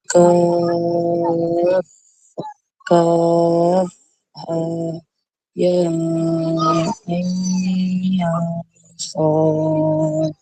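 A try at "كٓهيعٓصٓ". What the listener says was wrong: Kau 2 kali. Ustaz tak nak 2 kali, dia sekali je.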